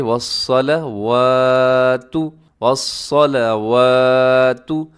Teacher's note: والصلوات صاد موٹا ہے اور واو کے اوپر کھڑا زبر کی وجہ سے ہم لمبا کر دیں